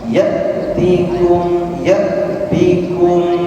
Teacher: sukun hamzah sifatnya syiddah ya apa syiddah tertahannya nafas ya jadi jangan sampai dia mengalir Ya.